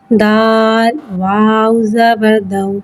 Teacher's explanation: واو ساکن سے پہلے زبر آ رہا ہے، واولین ہو رہا ہے، لہذا واولین کو بغیر کھینچے بغیر جھٹکا دیے نرمی سے معروف پڑھیں گے اور زبر کو منہ کھول کے ادا کریں گے۔